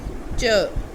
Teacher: तो इसमें श साउंड ऐड हुई है और य साउंड ऐड हुई है। अब ट और श को जब हमने ऐड किया तो साउंड बन गई च